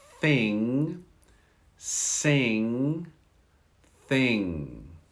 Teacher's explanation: Listen as the tongue goes between the teeth.